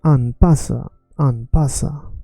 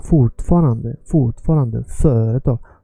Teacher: And then we have here with 3 or more. And again, first syllable is stretched more